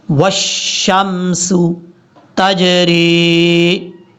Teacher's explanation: یہاں پر واو کو شین کے ساتھ کنیکٹ کریں گے، اور جب واو کو شین سے ملائیں گے تو بیچ میں حمزہ اور لام کو چھوڑ دیں گے